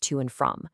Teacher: they tend to get equal stress, so they both pop back into their strong forms